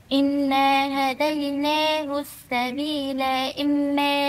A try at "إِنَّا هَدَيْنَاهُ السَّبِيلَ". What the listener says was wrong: مش سبيلة. سبيلة. سبيلة أنا زودت ألف، ما فيش ألف، دي لام مفتوحة. إنا هديناه السبيل إما سبيل إما سبيل سبيل مش سبيلة. سبيل دي لام فتحة مش لام ألف. يا يعني السبيلة زودتي ألف.